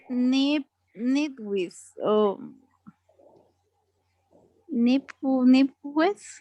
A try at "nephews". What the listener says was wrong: Nephews. Nephews. PA sounds like F. Nephews.